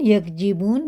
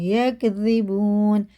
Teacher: زال کو باریک پڑھیں گے